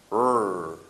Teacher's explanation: It's very close to the lateral sound, but the key differentiation here is that our tongue is not touching our alveolar ridge. It's approximately in the middle of our mouth. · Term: R sound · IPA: /r/